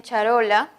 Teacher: es lateral porque la lengua va a adoptar una posición de tal forma que el aire va a salir por los dos lados, o por un lado también. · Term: lateral alveolar